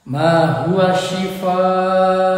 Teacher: Setelah tanaman hurufnya panjang, huruf hamzah ini disebut mad wajib muttasil karena huruf madnya bertemu dengan hamzah dalam satu kata. Jadi huruf mad bertemu dengan hamzah dalam satu kata, dibaca panjang 5 harokat